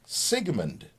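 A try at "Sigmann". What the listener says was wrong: Nope, no D on it. M-A-N-N.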